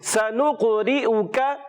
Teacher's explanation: سیٹی کے ساتھ سین ادا کریں گے. قاف میں کلکلا کریں گے, کلکلا والا حرف ہے. را کو باریک رکھیں گے, زیر ہے.